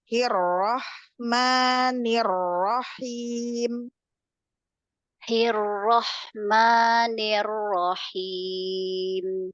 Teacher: H-nya jangan ikutan ee tebal seperti ro